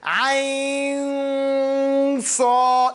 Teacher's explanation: the noon is going to be thick because you're going to sad and has isti'la and has tafkhim in it. So you're saying ayn sad, you're getting your mouth ready for the sad.